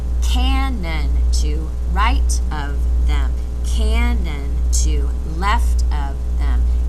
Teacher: can see here that the pattern of stressed and unstressed syllables we start with a stress and then it's followed by two unstressed and that is the regular rhythm throughout this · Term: dactylic rhythm